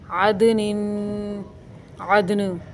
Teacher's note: دال کے اوپر قلقلہ کریں گے